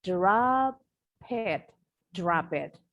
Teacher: Now, for example, in the phrase drop it becomes drop it. So I push the consonant P to the vowel I in the word it.